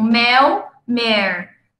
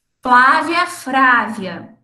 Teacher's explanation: eu troco o L pelo R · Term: rotacismo